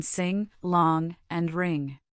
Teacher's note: the back of your tongue raises to the soft pallet, blocking the oral cavity